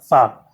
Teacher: जो निचला दांत है उसको अगर आप नीचे वाले होठ से टच करके बोलेंगे तो सही प्रोनाउंस आएगा, फा। ठीक है, तो यहाँ पे जो है इसके जो है कुछ शब्द मैंने यहाँ पे लिखे हैं।